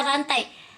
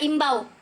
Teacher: bunyi vokal rangkap yang tergolong dalam satu suku kata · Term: diftong